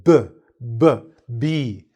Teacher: The lips come together, pursing, making more of a vibration.